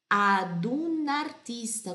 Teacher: tudo uma coisa só. Ad un artista, como se fosse uma única palavra.